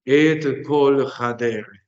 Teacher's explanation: El makef, que vuelve todas esas palabras como si fueran una única palabra, tirando el acento hacia el final.